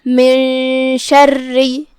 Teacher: شین کی ادائیگی زبان اور اوپر کے تالوں کے درمیان سے ہے، ہم شین کو وہیں سے پڑھیں گے. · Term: حرف الشین